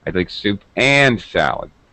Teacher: I stress and because I'm correcting the waiter. The waiter asked me if I would like soup or salad.